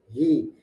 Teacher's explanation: Jangan i, kalau i dia hamzah, tapi di sini ha.